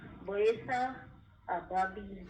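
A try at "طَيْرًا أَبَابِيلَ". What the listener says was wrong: बस जब आप ऐसा में आए तो इस एन के ऊपर थोड़ा सा भार दीजिएगा।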